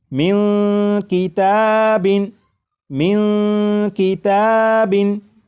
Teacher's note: بعد کاف ان 15 حروف میں سے آ چکا ہے، لہٰذا اس نون ساکن میں اخفا ہوگا، یعنی اس نون ساکن کی آواز کو ناک میں چھپا کر غنہ کر کے پڑھیں گے